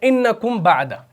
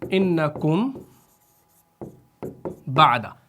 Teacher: میم مخفا جو ہے یہ دونوں ہونٹ اور خیشوم کے درمیان ادا ہوتا ہے، یعنی دونوں مخرجوں میں سے ہر ایک پر آواز کا ناقص اعتماد ہوتا ہے.